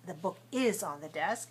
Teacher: normally we don't pronounce is with such stress